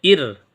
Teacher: یہ را باریک ہوگی کیونکہ رائے ساکنہ سے پہلے حرف کے نیچے زیر آیا ہے، جب بھی زیر آئے گا تو باریک ہوگی۔